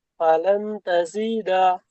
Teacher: নুন সাকিনের পরে হরুফে ইকফা, 15টি অক্ষরের মধ্যে তা এসেছে। তাই নুন সাকিনের আওয়াজকে এক আলিফ পরিমাণ গুণা করে পড়তে হবে। জিমের নিচে জের আছে, যেটি হারাকাত, হারাকাতকে তাড়াতাড়ি পড়তে হয়, টান দেওয়া নিষেধ।